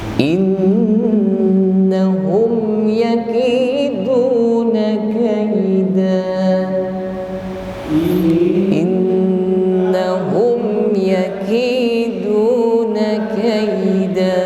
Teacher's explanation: Nun bertasydid ditahan sampai berdengung di al-khayshum atau rongga hidung. Kalau cuma innahum, nah ini sebenarnya sudah dengung namun kurang sempurna, ya.